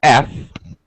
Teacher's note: my top teeth on my bottom lip and I just breathe